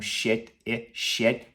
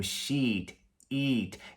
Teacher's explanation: um é curto, como shit e shit, e o outro é longo, como sheet, eat